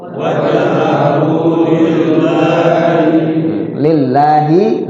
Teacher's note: Wajhahu lillahi lafzul jalalah. Lafzul Allah dibaca tipis karena lafaz Allah ketemu huruf yang sebelumnya berbaris kasrah.